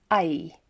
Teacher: starts with a big open mouth and it ends with a flat mouth